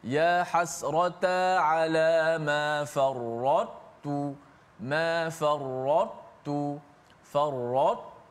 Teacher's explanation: Sifat tebal ta itu dikekalkan, kemudian baru masuk ke dalam huruf ta tanpa qalqalah. · Maka caranya dibaca secara idgham naqis. Masuk juga ta kepada ta, tapi masuk sebahagian sahaja. Maknanya ta sifat itba' ta tu dikekalkan.